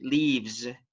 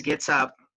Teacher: the pronunciation for this letter S is Z, right? Because it's a voiced sound, what we have here, the letter V